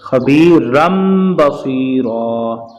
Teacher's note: رن نہیں پڑھیں گے اب اس کو ہم پڑھیں گے خبیرم بصیرا، یعنی اس کی آواز کو میم سے بدلیں گے